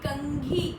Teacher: तो यहाँ कंठ पर जब आप कंघी बोलते हो तो आपकी सांस यहाँ कंठ में रुकती है और नाक से बाहर निकलती है। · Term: अनुस्वार